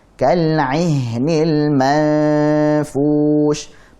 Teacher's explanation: Kal ihnil, ha alirkan rokhawah.